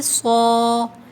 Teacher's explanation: موٹا پڑھنا ہے، ٹھیک ہے، سا کی آواز نہیں آئے گی، صا، ہا کے اوپر کھڑا زبر ہے، اس کو بھی 2 کاؤنٹس کھینچیے۔